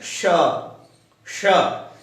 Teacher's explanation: ये जो श है ये तालु से बोला जाएगा, जहां से च बोला जाता है।